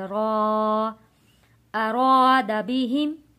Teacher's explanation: الف سے پہلے زبر ہو حروف مدہ ہوتا ہے، تو یہاں ایک الف کے برابر لفظ کو کھینچ کر پڑھیں گے